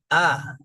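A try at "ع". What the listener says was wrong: ini masih mirip nih. Ainnya masih kurang. Ain pertama kita harus tahu dulu perbedaannya. hamzah itu suaranya keluar dari tenggorokan bagian bawah.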